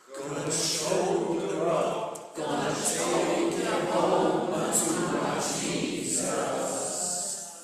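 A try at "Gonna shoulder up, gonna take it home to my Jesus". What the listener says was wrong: No S's, there's only one. To my Jesus. Jesus. After she gives you the fermata for the cutoff, is when you hear the S.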